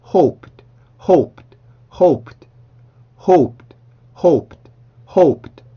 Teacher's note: 그러면 발음 기호상으로는 르의 소리를 갖고 있지만 소리는 트의 느낌을 갖게 된다. 그래서 hope까지 발음하고 그 다음에 르 발음을 해줄 때 이 소리가 나는 게 아니라 트의 느낌을 갖게 돼요